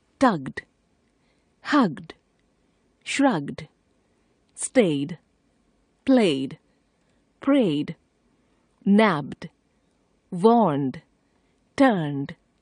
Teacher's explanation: If the last letter of the verb is a voiced consonant, then the suffix ed is pronounced like d.